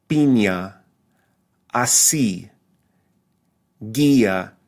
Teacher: So again, this sound in Spanish is E, a closed high front vowel